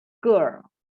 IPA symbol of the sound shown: з: